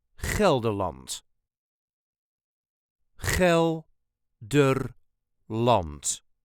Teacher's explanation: There is a very slight emphasis on the first syllable